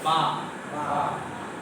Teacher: দুই ঠোঁট পুরোপুরি মিলে যাবে, সেখান থেকে বাটা উচ্চারিত হবে।